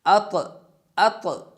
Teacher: جو طا ہے اس کی آواز کو ڈبل کریں گے، ہلا کر پڑھیں گے، جنبش دیں گے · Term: قلقلہ